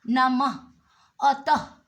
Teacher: कोई भी शब्द जब उच्चारण करेंगे तो इसमें ह अवश्य आएगा और ह के समान ही होता है इसका उच्चारण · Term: विसर्ग